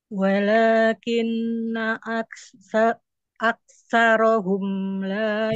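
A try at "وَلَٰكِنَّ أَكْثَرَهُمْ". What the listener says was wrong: Sa. Sa coba sa. Si, sasisubas. itu masih ada sina sedikit saja. Sasisu. Walakinna aktsarahum. Sisanya sudah baik, Ibu.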